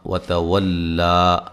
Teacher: لا باریک پڑھنا ہے اور ایک الف کی مقدار کے برابر لمبا کرنا ہے. ملانے کی صورت میں مد ہوگی، مد جائز.